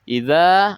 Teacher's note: Idza ada mad tabi'i atau mad asli dibaca panjang 2 harokat.